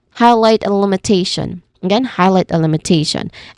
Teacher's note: And then, of course, the Tion spelling, it sounds like shun. So this is limitation with te, the third syllable, as its emphasis here.